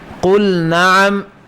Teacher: لام کا نون میں بھی آپ نے ادغام نہیں کرنا